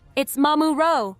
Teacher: It's mamuro, with the emphasis on the first syllable, soft and flowing.